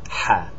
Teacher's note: letter that we do not have in English it's called ha it's pronounced like an H but more friction in the back of the throat